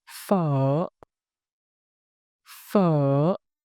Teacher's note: Throat filling, slight tightening as your voice dips, then a smooth release at its rise. Imagine your voice making a little question mark shape. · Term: high tone